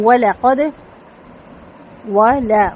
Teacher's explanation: واو لام دونوں باریک اور واو کو ہونٹ مکمل گول کر کے قاف پر اور دال پہ قلقلہ